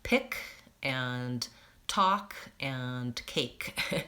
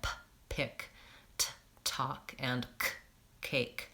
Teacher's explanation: So in American English, yes, P, T, and K always have that aspiration after them when they're at the beginning of the word.